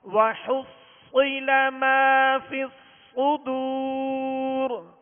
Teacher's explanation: اس صاد کو پر پڑھنا ہے اور سیٹی کی آواز اس میں پیدا ہوگی. وَحُصِّلَ مَا فِي الصُّدُورِ اور ان دونوں صاد پہ تشدید ہے اور تشدید تین دندانوں والی شکل کو کہتے ہیں.